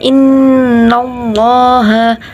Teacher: nun bertasjid dibaca dengung bacaan gunah